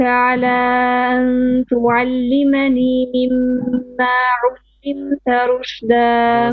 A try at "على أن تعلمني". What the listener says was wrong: There was a mud here. على 4 beats.